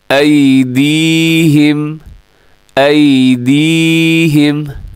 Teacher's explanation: या साकिन से पहले दाल के नीचे ज़ेर है, तो इसको कहा जाता है या मद्दा। इसको खींचना है आपने।